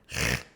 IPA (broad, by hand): ʁ